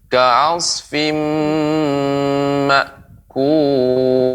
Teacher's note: ka'asfim ini idgham bi gunnah, maka jangan terlalu cepat ya, tapi kita berikan dia gunnah dengung.